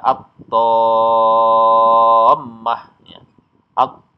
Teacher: dibaca panjang enam harakat atau tiga ayunan kemudian baru masuk ke tasdidnya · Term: mad lazim musaqal kilmi